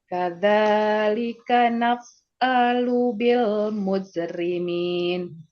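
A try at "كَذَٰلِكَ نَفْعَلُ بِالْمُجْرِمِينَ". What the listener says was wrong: Tajamkan ain. Naf'a.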